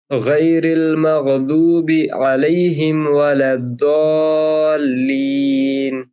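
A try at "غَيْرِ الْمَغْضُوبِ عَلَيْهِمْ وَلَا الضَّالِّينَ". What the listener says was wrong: हाँ, ये थोड़ा-सा यहाँ पे अब देखिए यहाँ पर वो आपका जो मद है ना, तो ये लॉन्ग मद है, तो इसको पढ़ते हैं हम 5 से 7 अलिफ तक। तो कोशिश करिए थोड़ा-सा ज़्यादा। वलद्दोल्लीन।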